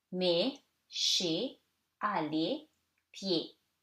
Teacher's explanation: So, these are all silent consonants, so you read it like the closed, more closed sound E.